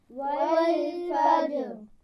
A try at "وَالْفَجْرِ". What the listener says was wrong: را کو موٹا پڑھنا ہے. فجر.